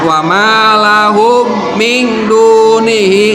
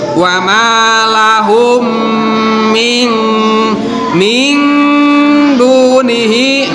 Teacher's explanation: Itu juga sama harus diidghamkan. Cara pembacaannya harus didengungkan itu kan. Wa malahum, jadi harus ditahan terlebih dahulu, ditahan sebentar gitu kan. Jangan langsung. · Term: idgham mislain